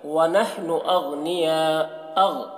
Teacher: وَنَحْنُ أَغْنِيَاء، غین میں قلقلہ نہ ہونے پر اس کا خیال رکھنا ہے، اور یا میں جو مد ہے اس مد کو مد متصل کہتے ہیں۔ مد متصل کو 3-4 الف کے برابر کھینچ کر پڑھتے ہیں۔